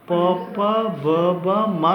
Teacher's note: ತುಟಿಗಳ ಸಹಾಯದಿಂದ ಉಚ್ಚಾರಣೆ ಮಾಡುವುದರಿಂದ ಇವುಗಳನ್ನು ಓಷ್ಟ್ಯಾಕ್ಷರಗಳು ಅಂತ ಕರಿತೀವಿ